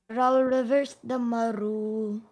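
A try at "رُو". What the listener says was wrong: Ru, make the ra smoother, man. Ra reverse dhamma ru.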